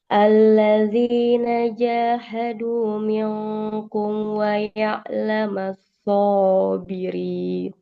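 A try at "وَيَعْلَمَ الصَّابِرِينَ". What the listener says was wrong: Lebih mengalir suara huruf sodnya.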